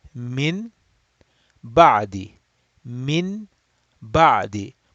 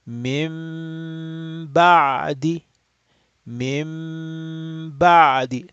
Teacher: If I were to recite the two words separately, then I will say min ba'di, min ba'di. But we are reciting them together, so we will say mim ba'di, and we have to stretch the gunna. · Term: Iqlab